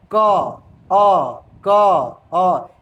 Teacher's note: क दो दो टुकड़ों में टूट जाता है। एक क हलंत और एक अ में टूट जाता है। बोलने के क्रम में जो क होता है वो दो टुकड़ों में टूट जाता है।